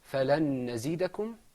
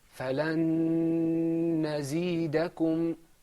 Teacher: There's a humming on the second one. It's longer. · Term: ghunna